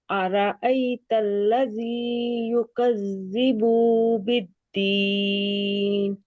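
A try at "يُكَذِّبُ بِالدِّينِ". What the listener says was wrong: बू ये आपका थोड़ा सा लंबा हो गया, वाव मद्दा बन जाएगी बू। जल्दी से कह देना, युकज़्ज़िबु बिद्दीन।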